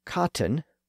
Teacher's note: the same thing goes for cotton which should be pronounced with the T sound not cotton with the T left out